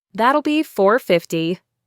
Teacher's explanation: Here we have a standard contraction that will becomes that'll. The L sound then links to the B sound of B.